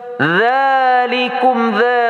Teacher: makhrajul dza lembut keluar ujung lidah sedikit panjang 2 harakah mad asli.